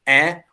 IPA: ӕ